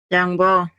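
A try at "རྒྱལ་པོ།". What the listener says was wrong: You say jangpo. Galpo. Galpo.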